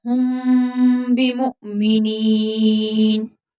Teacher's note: बिमुमिनीन, अगर नून साकिन के बाद यहाँ पर बाद है तो वहां मीम लगा कर पढ़ते हैं, नून को मीम में तब्दील कर देते हैं, लेकिन यहाँ पर पहले ही मीम है तो गुन्ना होगा